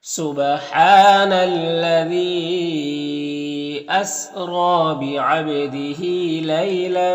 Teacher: حمزہ اور یا دونوں میں کھڑا زبر ہے اور نام الف مدہ ہے تو ان سب کو ایک الف کے برابر کھینچ کر پڑھیں گے